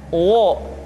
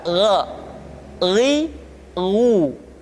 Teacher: Perhatikan posisi mulut kita ketika mengucapkan dalam keadaan fathah, tidak dimonyongkan wo, tapi terbuka